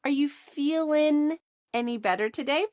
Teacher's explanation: notice in a lot of these questions, the g at the end of i n g feeling is cut off